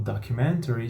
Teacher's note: pode jogar fora esse T ali